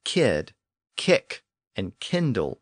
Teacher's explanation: those words can also be identified in part by their Norse k sound before the front vowels